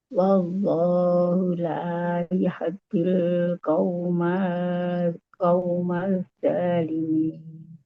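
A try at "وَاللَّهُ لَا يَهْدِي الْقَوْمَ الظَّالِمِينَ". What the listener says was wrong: Qaumadz-dhalimin. Tebal dha. Qaumadz-dha. Qaumadz-dhalimin. Qaumadz. Iya, jadi lamnya udah nggak dibaca. Itu gom. Udah itu gom masuk ke zo. Al-Syamsiah. Qaumadz-dhalimin.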